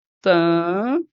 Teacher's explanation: vocês podem perceber que esse esse M tem som de I. Então, aqui eu tenho um encontro vocálico chamado ditongo. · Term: ditongo decrescente